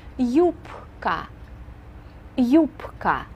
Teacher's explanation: we pronounce this word with a P sound and a K sound in the middle